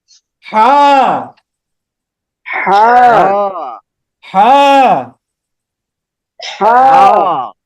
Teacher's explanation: কণ্ঠনালীর মাঝখান থেকে বা হলকের মাঝখান থেকে গলাটাকে একটু চেপে বা সংকুচিত করে